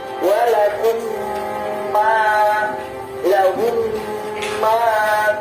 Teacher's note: Keduanya adalah bacaan idgham mimi karena ada mati bertemu dengan huruf mim sesuai dengan namanya, yaitu idgham mimi yang artinya adalah memasukkan huruf mim. Maka cara membacanya adalah dengan memasukkan huruf mim kedua ke dalam huruf mim yang pertama dengan disertai dengungan